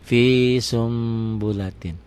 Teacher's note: Bunyi n-nya berubah menjadi m, samar sedikit seperti ikhfa sapawi, seperti ikhfa saat membunyikan fa. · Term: iklab